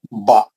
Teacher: एक हरकत है ना, बा एक हरकत खींचना, एक से ज्यादा नहीं। आवाज किधर जा रहा, ऊपर जा रहा। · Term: जबर